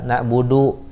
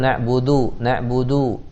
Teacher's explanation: Dalnya ke pangkal gigi seri atas, jangan ke langit-langit.